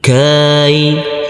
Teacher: Huruf kaf yang berfathah A ini bertemu dengan huruf ya sukun. Kita lembutkan karena ini adalah bacaan layin atau bacaan lin.